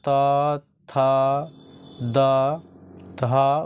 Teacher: इन सभी वर्णों का उच्चारण स्थान कहाँ से होता है, तो दंत से होता है।